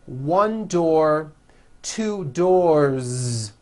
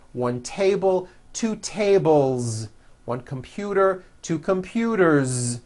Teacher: 1 door, 2 doors, with a voiced Z ending